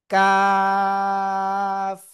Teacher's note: জিব্বার গোড়া, এই যে গোড়া থেকে একটু আগে বাড়াবো, তার বরাবর উপরে তালুর সাথে লাগাবো, লাগিয়ে আমরা উচ্চারণ করব কাফ।